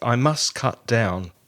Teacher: And must often comes out as must. And the T seems to be missing.